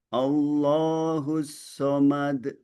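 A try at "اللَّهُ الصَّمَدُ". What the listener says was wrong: Lebih dibuka a-nya. Lebih lebih-lebih dibuka lagi.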